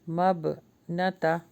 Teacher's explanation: با کے اوپر جزم ہے تو قلقلہ ہو رہا ہے